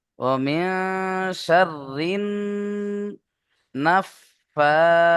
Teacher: তারপরে দেখেন ওমিয়া শাররিন নাফাসাতি, দুটো খাড়া যাবার আছে এখানে, দুটোকেই এক আলিফ পরিমাণ টান দিয়ে পড়তে হবে।